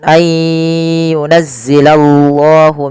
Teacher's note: tebalkan lafal Allah karena di situ lamnya lam tafhim